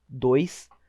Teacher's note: 2 é um som junto e por isso eles não são separados o O e o I. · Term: semivogal